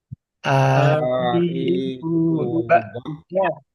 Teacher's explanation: Ini hamzahnya posisinya di paling bawah, paling pangkal.